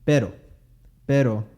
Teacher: pero is with the single tap